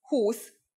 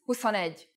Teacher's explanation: 20 is 20 with a long U, but 21 is 21 with the U pronounced short